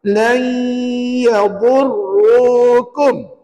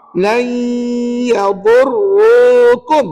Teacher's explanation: nun mati tu nak baca ke tidak? Tak baik baca. Sebaliknya kita masukkan ke dalam huruf ya. Jadi yang bunyi lan itu bunyi huruf ya puan. · Jadi yang bunyi lan itu bunyi huruf ya puan. Bunyi huruf ya yang mana ada bunyi sengau kat situ.